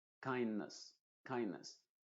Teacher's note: en las palabras terminadas en nes en general esa e se va a pronunciar como una sha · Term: schwa